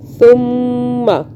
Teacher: سا کو بھی سافٹ پڑھنا ہے, سین کی آواز میں نہیں پڑھنا